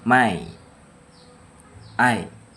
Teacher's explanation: Demonstrasi cara ucapannya itu my I. Mulut terbuka lebar diawali, lalu mulut mengecil lalu lidah naik ke posisi di akhir. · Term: diftong